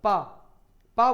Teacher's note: पा बोलते समय आपकी जो ओंठ है वो परस्पर मिल चुके हैं, उनमें गैप नहीं हो रहा है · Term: ओष्ठ व्यंजन